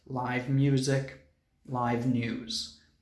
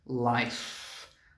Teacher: Life is a noun, and it also has an F sound. The other three words in this video have a V sound, but life has an F sound.